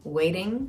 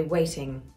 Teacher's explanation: Waiting, what we call a flat T, waiting, that we do in America all the time. In this class of England, you would say waiting.